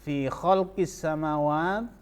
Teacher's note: alif lam bertemu dengan huruf shin, maka alif lamnya tidak dibaca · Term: alif lam syamsiyah